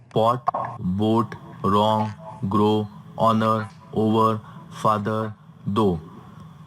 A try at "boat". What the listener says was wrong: Okay, my first suggestion is lesson 7, make the long vowel sound longer. Boat, grow, though, over.